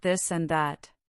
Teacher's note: The first th is voiced meaning your vocal cords vibrate and it is found in words like this and that.